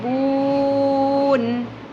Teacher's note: ہا لام زبر حل، بی حل، میم پیش مو، بی حل مو، قرو قوف پر ہوگا، لہات یعنی نرم تالو سے ادا ہوگا، اور قوف کے ساتھ رو بھی ہیوی ہو جائے گا، فل ماؤتھ کے ساتھ ادا کرنا ہے، قرو، با واو پیش بو، اینڈ دین نون زبر جو ہے وہ ساکن ہو جائے گا وقف کی صورت میں، بو نہ کی جگہ ہم پڑھیں گے بون، ٹھیک ہے۔